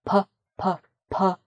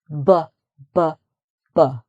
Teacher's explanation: the P the P sound is lighter and the B sound is heavier you use your vocal cords more to make the B sound